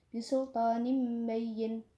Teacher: tanwin bertemu dengan huruf ba, maka dibaca mim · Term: iqlab